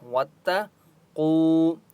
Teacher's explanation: واتقوا، واو مدہ ہے، قاف کو 1 الف کی مقدار کھینچ کر پڑھیں گے اور قاف مستعلیہ میں سے اس لیے قاف کو موٹا پڑھیں گے